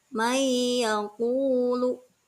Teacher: Nah, itu ada huruf nun mati, kedepannya ada huruf iya. Nunnya tidak dibaca, seolah-olah tidak ada. Langsung kepada huruf iya. Dan kemudian itu disertai dengan gunah. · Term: idgham bigunah